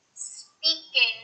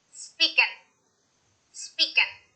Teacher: Speaking. Many Spanish speakers drop the G, they leave the G off at the end of the word, and it ends up sounding like this.